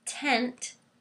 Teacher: you're tapping your tongue but the voice is off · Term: unvoiced